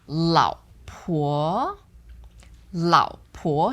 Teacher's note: so the first one is third tone second one second tone